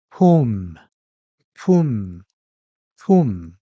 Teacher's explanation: When you pronounce whom and shun, the airflow is blocked at the end. With whom, your lips close and block the airflow like this.